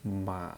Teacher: remember the third tone goes very low